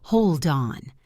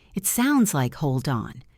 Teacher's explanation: The word hold ends with a D, and on starts with an O. We connect them to say, hold on. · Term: linking